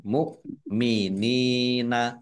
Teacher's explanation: Hamzah sukun dibaca mu jangan keliru Ain atau Kaf dibaca ringan